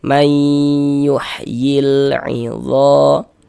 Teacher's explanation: Jadi di bagian mai itu suaranya itu kita tahan, kita panjangkan sejenak ya. Kira-kira sepanjang 2 harokat. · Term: gunnah